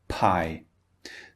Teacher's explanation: P as in pie. So, we're building up the air in our mouth and then we're opening the lips to release the sound.